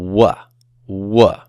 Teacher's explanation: Your lips start w, rounded, and then your mouth opens and your lips spread out. Okay, so your lips are moving apart from each other to pronounce the w sound, w.